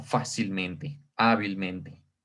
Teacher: esta cuarta sílaba o la que está antes de la antepenúltima es en donde hacemos nosotros la fuerza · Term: sobre esdrújula